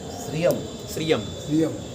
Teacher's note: એ મીંડુ હોય ને તો એનો અડધો જ મ બોલવાનો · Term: અડધો મ